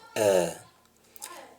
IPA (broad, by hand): ɜːr